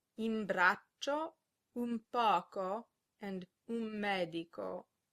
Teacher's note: If an N is followed by a B, P, or M, it is often pronounced M. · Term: assimilation